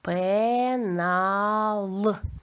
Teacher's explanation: тут звук л наприкінці слова твердий твердо звучить